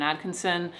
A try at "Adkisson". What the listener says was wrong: It's actually Adkisson. There's no N. Do you know that?